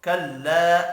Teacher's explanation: الف کے اوپر چھوٹی مد ہے، 3 الف کے برابر کھینچ کر پڑھیں گے۔ ان نون مشدد پر غنہ کرنا ہے۔